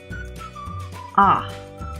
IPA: ʌ